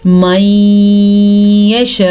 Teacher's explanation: یہ 5 الف کے برابر ہے، 4 سیکنڈ تک یہ مد لمبی کی جاتی ہے